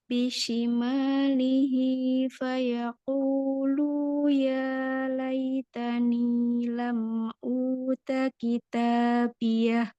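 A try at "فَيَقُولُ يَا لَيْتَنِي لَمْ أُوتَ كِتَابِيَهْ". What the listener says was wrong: Pada fayaqulu, lamnya tidak ada mad tabi'i, Umi, jadi langsung saja. Fayaqulu ya laitani.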